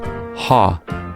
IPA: h